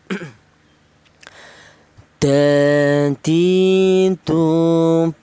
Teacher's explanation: berasal dari ujung lidah menyentuh pangkal gigi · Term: huruf dal